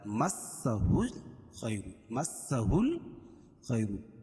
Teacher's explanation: الف لام کے بعد حروف قمری کے 14 حرفوں میں سے خا ہے، تو یہاں لام پڑھی جائے گی، ہا کو لام میں ملائیں گے، ہا لام پیش ہل، خا یا زبر خی، را پیش رو، مسہل خیر۔